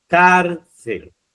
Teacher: Sílaba tónica, fijaros, es car